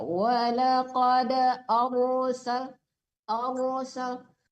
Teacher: ditebalkan rohnya ya, karena sebelum roh mati dia berharakat fathah Haraf fathah, haraf dhamma, ra-nya ditebalkan kalau mati ya.